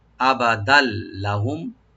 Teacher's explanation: আর মিলাই পড়লে লামের সাথে মিলাই পড়বো, আবাদাল লাহুম, তখন এদগাম হবে উইদাউট গুন্না, গুন্না ছাড়া এদগাম করতে হবে লামের সাথে। আবাদাল লাহুম, লাহুম লামটাকে ওপেন করে, মিম সাকিন এখানে আমরা এজাহার করব, এখানে গুন্না বা এফা হবে না, লাহুম, আবাদাল লাহুম।